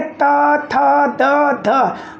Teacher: तो ये जो त, थ हम बोल रहे हैं तो हमारे जीभ का आगे वाला भाग ऊपर वाले दांत का ठोकर मार रहा है ना